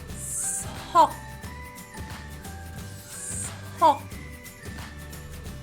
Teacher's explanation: the S is almost not even a sound. It's almost just air coming through my teeth.